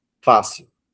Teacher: Veja que a última sílaba não está sendo acentuada, e sim a penúltima. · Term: paroxítono